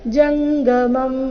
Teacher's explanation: ಇಲ್ಲಿ ಜಂಗ ಅಂತ ಇಲ್ಲ ಜಂಗ ಗ ಇದೆ ಅಲ್ಪಪ್ರಾಣ